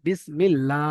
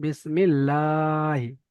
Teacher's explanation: আল্লাহ শব্দে লাম তাসদিদের আগে জের এসেছে, তাই আল্লাহর লামকে বারিক অর্থাৎ লা পড়তে হবে। লামের উপর খাড়া যাওয়ার আছে, খাড়া যাওয়াটি আলিফ মাদ্দা সমতুল্য একা কালি পরিমাণ টান দিয়ে পড়তে হবে।